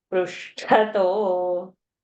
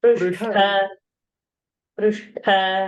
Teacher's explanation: And ta, you put out with more air, it's called Mahaprana, it will become tha.